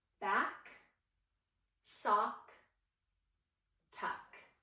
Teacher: the k sound is unvoiced, and when we make that, our mouth is open, our tongue is in the back of our mouth, and we kick that sound out